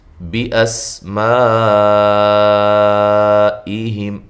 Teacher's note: سین باریک سیٹی کے ساتھ، میم پہ جو مد ہے مد واجب ہے۔